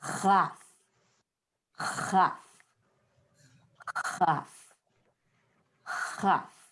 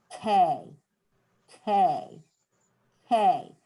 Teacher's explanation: But instead of letting your tongue hit the roof of your mouth, if you open it up just a little bit so that you can blow air through it, instead of saying K, you would say, it's the same formation as K, only with a little space for the air to go through